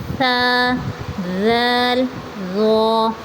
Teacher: زبان کی نوک ثنایا علیہ کے کنارے جو مسوڑوں کے قریب ہیں ان سے لگے